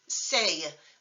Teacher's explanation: So compare the final syllable, se, with the English word say, which is long and actually adds a Y sound at the end